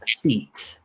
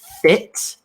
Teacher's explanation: the long e sound where you're smiling versus the short e sound where you're angry